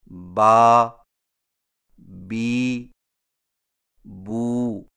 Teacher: الف مدہ کی آواز زبر سے دگنی، یا مدہ کی آواز زیر سے دگنی، اور واو مدہ کی آواز پیش سے دگنی ہوتی ہے، جو کہ 1 الف کے برابر ہوتی ہے. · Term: حروف مدہ